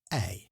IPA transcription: ɛi